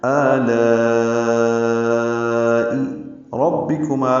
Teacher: را کی زبر کی وجہ سے را کو پر پڑھ رہے ہیں ، با کو معروف طریقے سے جلدی پڑھیں گے، ربی ربے